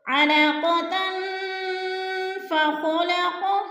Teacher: اخفا میں سے آ رہا ہے تو ادھر اخفا کریں گے، یعنی ناک میں آواز لے جائیں گے، لفظ کو چھپا کر پڑھیں گے